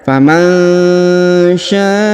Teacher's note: huruf sya dipanjangkan 5 harokat karena di sini terdapat tanda bacaan panjang 5 harokat